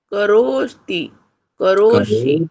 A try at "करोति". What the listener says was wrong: करोति, करोषि, करोमि। केवल रो ही दीर्घ है, का और ती तो ह्रस्व है ना, तो ती को खींच के दीर्घ क्यों करेंगे?